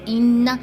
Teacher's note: جب ان پر شد آ جائے تو وہاں پہ غنہ کرتے ہوئے ناک میں آواز لے جا کر ایک الف کے برابر ہم ٹھہرتے ہیں